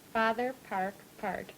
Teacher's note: A good, stout retraction of the tongue, sort of curled back when you say park and part.